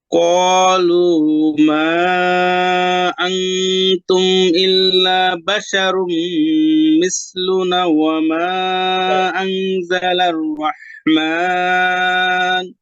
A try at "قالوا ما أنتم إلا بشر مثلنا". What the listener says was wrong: আচ্ছা, খেয়াল করেন। কলু, কফটা আর একটু ভিতরে, জিহ্বার গোড়ায়। ক, কলু না, কলু।